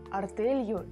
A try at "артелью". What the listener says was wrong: Только артелью мягкое произношение.